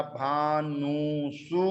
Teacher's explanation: उसके बाद में ओस विभक्ति आई तो व मुवर्णा भानवो, और शुभ विभक्ति आई पाका अनुबंध कर दिया योनुबंधो प्रयोगी, और उसके बाद में नामी कर पराह प्रत्यय विकाराः गमस्ताः शीसमनु विसर्जनीय सांतरोपी। सूत्र के माध्यम से जो दंत सकार था उस दंत सकार के स्थान पर मूर्धन्य सकार आदेश हो जाएगा और शब्द बन जाएगा भानुसु।